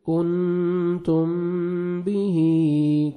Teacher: یہاں پہ میم ساکن کا اخفا ہے، نوز میں ساؤنڈ لے کے جائیں گے، کنتم به، کھڑا زیر ہے، 1 سیکنڈ کھینچیں گے، تا کو باریک پڑھیں گے، تو کذ، کاف کو بھی باریک پڑھنا ہے، تو کذ، ذال کو نرمی سے ادا کریں گے، تکذبون، واو مد ہے 1 سیکنڈ با کو کھینچنا ہے اور نون ساکن ہو جائے گا جب سٹاپ کریں گے.